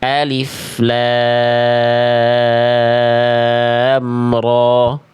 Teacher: Jadi lamnya bagus, ro-nya jangan kepanjangan. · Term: mad tabi'i harfi